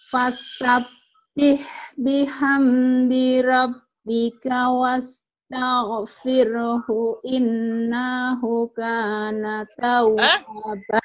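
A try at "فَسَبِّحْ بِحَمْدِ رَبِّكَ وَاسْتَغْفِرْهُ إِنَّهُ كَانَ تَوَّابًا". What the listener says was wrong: Jangan panjangan nunnya. Nunnya panjangan.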